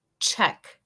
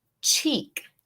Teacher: We have a short E, which sounds like an eh. We also have a long E, which sounds like E, like in Spanish.